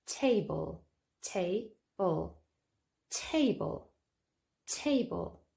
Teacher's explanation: Here, the stress is on the first syllable, not the second. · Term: word stress